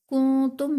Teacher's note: میم ساکن کے بعد حرف با اور میم کے علاوہ کاف آ رہا ہے تو یہاں پر اظہار شفوی کا قاعدہ ہوگا، یعنی میم ساکن میں غنہ نہیں کریں گے. کنتم میں نون ساکن کے بعد حروف اخفا میں سے تا آ رہا ہے تو یہاں پر اخفا کا قاعدہ ہوگا، یعنی نون ساکن میں غنہ کر کے پڑھیں گے